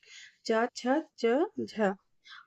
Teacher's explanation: स्पर्श संघर्षी जिन व्यंजनों के उच्चारण में स्पर्श का समय अपेक्षाकृत अधिक होता है और उच्चारण के बाद वाला भाग संघर्षी हो जाता है